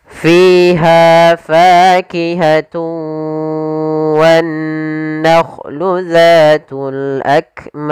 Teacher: kita boleh memanjangkan dua harakat boleh empat harakat dan boleh pula 6 harakat tapi kita Coba ambil yang empat saja yang tidak terlalu pendek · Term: Mad Arid lukun